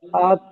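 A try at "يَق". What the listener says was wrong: ইয়া কব জবর ইয়াক। আক নয়, ইয়া কব জবর ইয়াক। ইয়াক।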